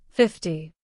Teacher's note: in 50, the stress falls on the first part, 50.